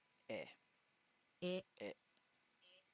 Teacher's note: It is a short sound at the front of the mouth, so be careful not to draw it out. Eh. Eh.